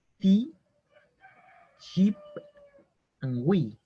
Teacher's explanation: sonido más agudo y largo que la I española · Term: la I más extensa